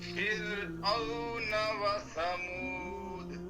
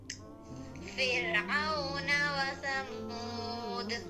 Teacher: जी फिरऔन व समूद, व समूद वाव अदा करते वक्त जब पेश पढ़ेंगे आगे वाव साकिन है तो होंठ गोल हो जाएंगे, ठीक है। फिरऔन की रा बारीक होगी, क्यों, इससे पीछे ज़ेर है।